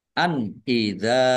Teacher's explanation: nun sukun bertemu dengan huruf alif bacaan idhar dibaca jelas